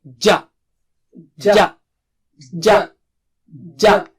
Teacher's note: زبان کے بیچ کا حصہ اوپر کی تالو سے لگانا ہے، سامنے کا نہیں، نوک نہیں